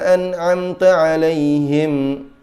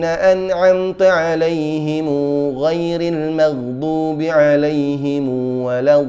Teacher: Cara kedua Qalun juga menggunakan silah, sehingga huruf mim yang biasanya kita baca sebagai sukun diberi dammah, dan bahkan diberi madd, yaitu panjang tambahan pada huruf mim.